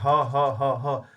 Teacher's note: कंठ से निकल रहा है